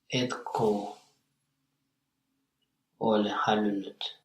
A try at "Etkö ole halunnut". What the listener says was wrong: Yes, but it's not ko, but. So think about the vowel harmony, it's not ko. Etkö Etkö ole halunnut, yes.